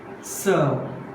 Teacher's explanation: R is silent. Why R is silent? Not given in phonetic symbols.